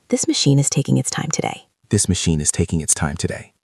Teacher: And notice my intonation. It goes down at the end. It's a statement, not a question.